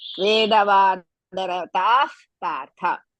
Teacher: To remove the visarga, next letter after Vedavadarata, next letter is pa. So as a result, we have to use fa. That is F.